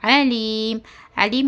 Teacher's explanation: دو پیش نکال دے کر میم کے پر سکون دے کر اپنے کو سانس توڑنا ہے. علیم درمیانی حلق سے پڑھنا ہے